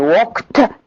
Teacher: The production of ed in walked as a voiceless plosive